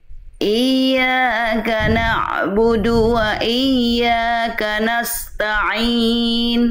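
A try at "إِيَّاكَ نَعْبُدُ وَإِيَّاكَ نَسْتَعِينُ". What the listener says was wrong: bagus lanjut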